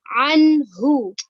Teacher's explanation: dia jelas terang tidak boleh dibaca dengungnya harus jelas · Nun dan ha itu kedudukannya sebagai huruf atau bacaan izhar halqi ya. Dia jelas, terang, tidak boleh dibaca dengung ya, harus jelas nun dan ha. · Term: kholqiyah